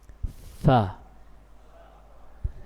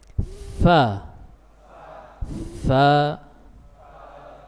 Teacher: Huruf fa ini makhrajnya ujung gigi seri atas, iya, dengan bibir bagian dalam yang bawah. Fa, iya, harus menyentuh ya, sehingga sempurna.